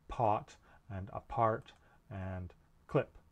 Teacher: it's a stop and that means while you're making the p no air is passing through the mouth and it's made of the lips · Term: p sound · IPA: /p/